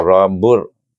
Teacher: bawa ra-bur dengan tebal bunyinya, kerana sebelum ra yang sukun terdapat huruf berbaris waw